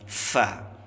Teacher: Naffa, nah fa-nya kita ucapkan dengan mengalirkan nafas. Fa itu makhrajnya ujung gigi seri atas ya, dengan bibir bawah bagian dalam.